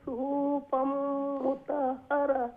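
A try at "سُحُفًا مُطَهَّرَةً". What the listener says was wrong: সুহুফাম ইনো long হইতো না সুহু হা হইয়া একটু লং হয়ে গেছে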